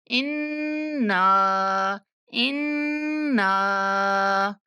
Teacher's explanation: जब इन करना है ना तो नाक में आवाज को महसूस करना है, उसके बाद ना करना है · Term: गुन्ना